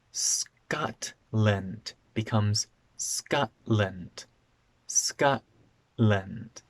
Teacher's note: So when T is before an N or an L, and sometimes at the end of a word, the T becomes a simple glottal stop, where my tongue doesn't go into the T position. Instead, my throat closes and the sound is cut off.